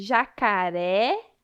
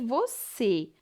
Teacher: Perceba a diferença de jacaré, acentuado com o acento agudo, esse é um som aberto, e você, acentuado com o acento circunflexo, pois é um som mais fechado.